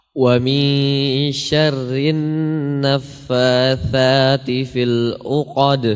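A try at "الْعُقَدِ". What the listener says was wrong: Huruf ainnya au, au. Au ya, jelaskan ainnya.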